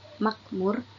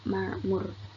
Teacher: Pengucapan bunyi k dibaca ain. Contoh, kata makmur menjadi ma'mur.